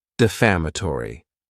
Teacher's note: this word has five syllables and the stress is on that second syllable